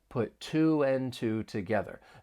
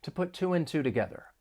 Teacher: When pronouncing this phrase, and this is very important, especially to sound natural, often the word and is reduced, and it's just going to sound like n.